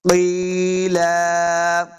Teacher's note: یا مدہ ہے، اس کو دو حرکات لمبا کرنا ہے۔ قیلا، جب وقف کریں گے تو ایک زبر کو ساکن کر دیں گے، اور ایک زبر کے ساتھ لام کے ساتھ جو آگے الف ہے، الف کے ساتھ ہم نے وقف کرنا ہے، ایک زبر کو پڑھیں گے۔